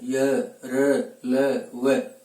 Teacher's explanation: श्वास वायु जिह्वा, तालु, दंत आदि को कम स्पर्श करके बाहर की ओर गमन करते हैं। अर्थात इनका उच्चारण करते समय हृदयगत भाग से बल लग करके इनका उच्चारण होता है। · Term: ईषद स्पृष्ट